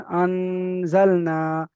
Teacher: নুন সাকিনের পরে হুরুফে ইকফার 15টি অক্ষরের মধ্যে থেকে সা এসেছে, তাই নুন সাকিনের আওয়াজকে নাকে তুলে একালি পরিমাণ গুণনা করে পড়তে হবে।